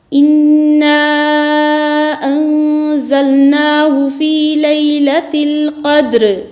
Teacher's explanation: انا مد منفصلہ ہے، اس کو کھینچیں گے، نون کو چھپا کر پڑھیں گے، اس لیے کہ نون کے بعد زا حروف اخفا میں سے آ رہی ہے۔